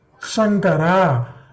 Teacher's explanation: Shankara, it is the front. Shankara is Talu. The middle of the tongue goes up.